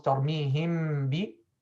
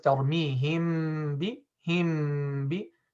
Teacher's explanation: it's wrong to keep any gap between the lips while applying the ikhfa shafawi